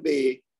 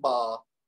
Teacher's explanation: ए के साउंड के साथ जो खत्म होती है आवाज जिनकी, इनको अरबी में आ के साथ बोला जाता है । यानी बे को हम अरबी में कहते हैं बा, और